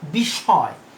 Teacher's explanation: মধ্য ও অন্ত মফলা সাধারণত উচ্চারিত না হয়ে সংযুক্ত ব্যঞ্জনটিকে দ্বিত্ব করে · তাহলে এক্ষেত্রেও ওই যে পরবর্তী যে এটা, সেটা সানুনাসিক হবে, সংযুক্ত ব্যঞ্জনটি সানুনাসিক উচ্চারণ হবে